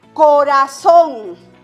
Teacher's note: La mayor fuerza de voz recae en la última sílaba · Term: palabras agudas